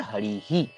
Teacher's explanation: विसर्ग का जो ह उच्चारण है उसके साथ इ वर्ण जुड़ जाता है। तो इ वर्ण जुड़ के हो जाता है। · मगर जब हम बात करेंगे हरि ही ई से, तो इधर क्या है, विसर्ग की जो पहले वाला स्वर वर्ण है वो ई है ना, तो विसर्ग का जो ह उच्चारण है उसके साथ ई वर्ण जुड़ जाता है। तो ई वर्ण जुड़ के हो जाता है यहाँ देखिए हरि ही, है ना।